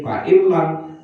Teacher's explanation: suara nun matinya dihilangkan langsung masuk ke lam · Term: idgham bila guna